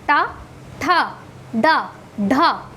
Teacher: मूर्धा, मूर्धा से होता है, यानी टा बोलते हैं तो हमारे जो जबान है कि क्या हो रहा है? रोल हो रहा है।